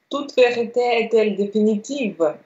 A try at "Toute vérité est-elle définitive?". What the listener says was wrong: Très bien.